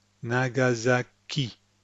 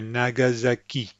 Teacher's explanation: you've got three syllables with the same emphasis. Nagasaki. The ki is where the emphasis is.